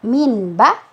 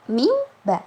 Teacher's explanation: huruf nun sukunnya berubah menjadi mim ketika bertemu dengan huruf ba. Jadi yang dibaca mim, bukan min ba tapi mim ba, seperti itu. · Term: iqlab